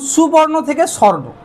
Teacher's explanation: কোনো শব্দের মাঝখান থেকে যদি কোনো স্বরধ্বনি লোপ পায় সেটাকে আমরা বলবো কি মধ্য স্বরলোপ